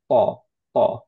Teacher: আমরা হচ্ছে মুখটাকে রাউন্ড করব না, আমরা হচ্ছে রাখবো হচ্ছে স্ট্রেট ফেস রাখবো মোটামুটি। ওকে, আর ফাতহা যখন পড়বো তখন অ্যাকচুয়ালি সাউন্ডটা হবে হচ্ছে অ রাদার দেন আ। সো হালকা হলে আমাদের হচ্ছে আ সাউন্ড হয়, যেমন তা। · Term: হেভি